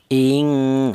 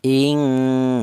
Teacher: panjangnya dengung dua harakat ing dua ketukan ing seperti itu.